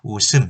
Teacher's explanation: 웃음, 시옷을 그대로 올리기만 하면 됩니다